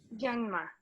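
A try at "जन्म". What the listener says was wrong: Janma. Good.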